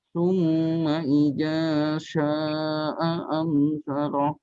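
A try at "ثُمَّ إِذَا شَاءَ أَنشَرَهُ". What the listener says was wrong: Baik, shinnya, sya, itunya agak dipanjangkan lagi. A'ansyarah.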